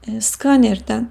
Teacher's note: Skaner sözünün vurğusu ilk hecadadır. Şəkilçi artırdığımız zaman da vurğu yerində qalır, ötürülmür.